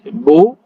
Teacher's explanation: makhrajnya berada di kedua belah bibir kita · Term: huruf ba